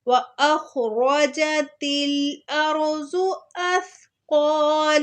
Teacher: خوا کو موٹا پڑھنا ہے، را کو بھی موٹا پڑھنا ہے